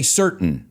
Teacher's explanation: you can say certain like I say it with that glottal stop